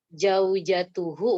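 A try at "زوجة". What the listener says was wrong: Zaujah kan? Za, pakai za, jangan pakai jim. Zaujah.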